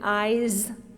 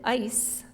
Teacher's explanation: when you say eyes the final sound is voiced Z eyes the only difference between eyes and ice is that the z sound at the end of eyes changes to an S sound at the end of ice